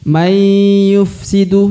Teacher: May yufsidu, jadi huruf nunnya tidak dibaca langsung melebur ke huruf ya, ya. Ditahan lalu didengungkan ya. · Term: idgham bi gunnah